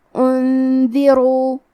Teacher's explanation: کلمت انذروا میں نون ساکن ہے، پھر حرف الدال ہے، یہ حکم الاخفاء ہے، تو ہم یہ حکم کو غنہ کے ساتھ ادا کریں گے